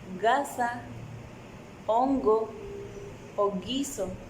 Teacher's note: en el oclusivo lingovelar sonoro, las cuerdas sí vibran.